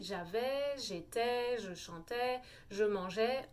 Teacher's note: je vous dis toujours dans les verbes à l'imparfait, il n'y a pas le son R. Par exemple, on dit j'avais, j'étais, je chantais, je mangeais, on n'a pas le son R.